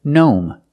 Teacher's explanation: when we see GN at the beginning of a word the g is silent just pronounce the n like a normal n